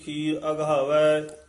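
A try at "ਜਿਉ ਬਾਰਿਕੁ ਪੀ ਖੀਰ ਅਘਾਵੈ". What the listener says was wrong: ਜਿਉ ਬਾਰਿਕ ਪੀ ਖੀਰ ਅਗਾਵੈ। ਪੀ ਖੀਰ ਇੱਥੇ ਠਮਕ ਲੱਗੇਗੀ, ਖੀਰ ਅਗਾਵੈ ਨਹੀਂ ਕਹਿਣਾ।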